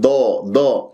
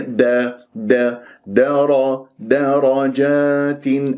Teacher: شوف الراء هي المفخمة لأن مفتوحة، أما الدال والجيم مرققة